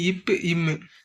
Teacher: மேல் உதடும், கீழ் உதடும் பொருந்த இவை வந்து தோன்றும்னு சொல்லுவாங்க. இப்பு, இம்முன்னு சொல்லக்குள்ள நமக்கு என்ன ஆகுது? உதடுகள் 2ம் ஒட்டுது.